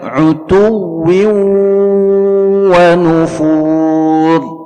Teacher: ada tanwin berjumpa dengan huruf waw, berlaku di sini idgham bi gunnah, ya, ditahan 2 harakat dengan dengung di dalam khayshum